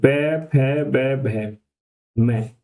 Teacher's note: ओष्ठ ओष्ठ या होठ यानी ऐसे वर्ण जिनका उच्चारण हमारा होठों की सहायता से होता है या ओष्ठ से होता है